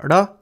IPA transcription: ɽ